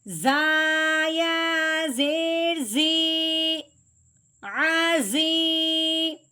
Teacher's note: زا یا ساکن کے ساتھ ملتے ہوئے ایک الف کے برابر لمبا بھی ہوگا